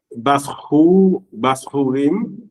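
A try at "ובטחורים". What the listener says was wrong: That's a tet, bathorim.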